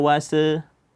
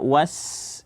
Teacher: sin jangan dipantulkan, jangan dibaca wase, tapi apa? Alirkan suara dia dengan sempurna, maka dibaca was, ya.